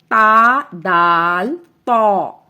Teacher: زبان کی نوک جب اوپر سامنے والے 2 دانتوں کی جڑ سے لگے تو تا، دال، تا ادا ہوتا ہے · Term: حروف نطعیہ